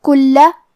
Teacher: لام پہ تشدید ہے، لہذا ہمیں 2 حرف کے برابر لام کو پڑھنا ہے، کیونکہ تشدید کی اصلیت 2 حرف ہے.